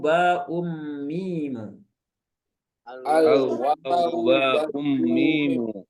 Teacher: bibirnya cuma satu ujung gigi seri atas ketemu bibir bagian bawah ini dua-dua bibir dua-duanya dipakai